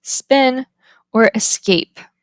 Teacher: Next, we have unaspirated stops, which is marked with the equal sign. Unaspirated stops are common following the fricative s, as in the words spin or escape.